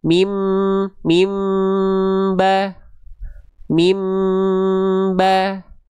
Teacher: Betul-betul n-nya dibaca menjadi m, dibalik menjadi m. · Cara bacanya bunyi an ini dibaca menjadi am. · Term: iqlab